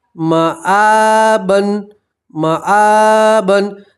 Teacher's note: الف کے اوپر کھڑا زبر ہے تو کھڑا زبر میں بھی آپ ایک الف کے برابر کھینچیں گے